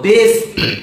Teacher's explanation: ये है दंत्य स। और दंत स का उच्चारण कहां से होता है? दांतों। दांत से।